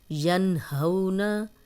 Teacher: یہاں پہ ہا آ گیا حروف حلقی میں سے تو غنہ نہیں کریں گے